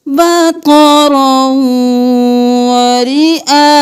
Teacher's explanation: حمزہ زبر الف مد 5 الف کے برابر کھینچیں گے